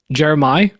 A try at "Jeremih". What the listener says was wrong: There's no AH. It's IH.